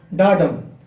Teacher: The meter is primarily iambic tetrameter, meaning each line has 4 iambs, metrical feet with an unstressed syllable followed by a stressed one